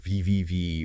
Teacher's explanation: those vocal folds are vibrating super fast as the air passes through them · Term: voiced sounds